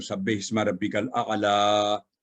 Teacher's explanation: لام پر عام فتح ہے تو آگے یا ہے، تو یا کی وجہ سے لا فتح اشباعی میں پڑھی جائے گی